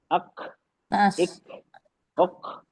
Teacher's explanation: ये काफ में हम्स होगा। Light हम्स